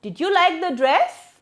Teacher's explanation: Rising ination, our voice rises at the end of the statement. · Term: Rising intonation